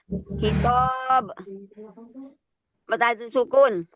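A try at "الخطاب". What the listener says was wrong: Bukan khitab, tob. Iya, jadi kadang-kadang orang kesalahannya menyebutnya al-khitab, alif disukun, salah.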